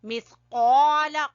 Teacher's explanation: سا زبان کی نوک اور اوپر والے سامنے والے دو دانتوں کے سرے سے